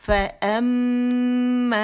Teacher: ٹھیک ہے, حرف غنہ مشدد ہے. 3 کاؤنٹس کے لیے اکمل غنہ ہے, موسٹ کمپلیٹ لانگیسٹ غنہ